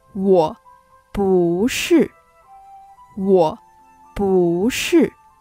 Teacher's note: Here, 不 is followed by 是, which is another falling tone. So, the tone of 不 changes to a rising tone.